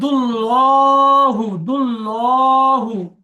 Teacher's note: আল্লাহর লামের পূর্বে পেশ এসছে, তাই আল্লাহর লামকে পুর করে পড়তে হবে, অর্থাৎ ল পড়তে হবে। তারপরে লামের ওপর তাসদিদ, তাসদিদ অক্ষরকে দুবার পড়িতে হয়।